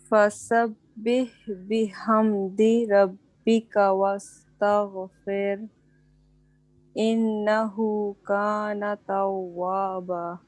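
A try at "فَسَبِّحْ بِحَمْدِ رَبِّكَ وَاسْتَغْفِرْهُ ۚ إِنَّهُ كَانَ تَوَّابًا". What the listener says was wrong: ایک را آپ نے صحیح کرنا ہے اور دوسرا ان غنہ کرنا ہے بس، باقی آپ نے پوری آیت ماشاءاللہ بہت اچھی پڑھی ہے، ٹھیک ہے.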